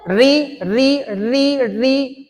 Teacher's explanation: देखो ऐसे वर्ण जिनको बोलते हुए हमारी जिह्वा ऊपर की ओर हल्की सी मुड़ जाती है, ऐसे वर्ण क्या कहलाते हैं, मूर्धन्य वर्ण कहलाते हैं।